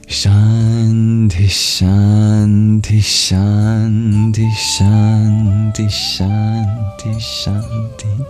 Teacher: But because we're chanting on loop, and yes, some of you might have already seen, we'll be doing it 1,008 times. The exhale bleeds into the SH sound at the beginning of the next recitation. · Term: mini exhale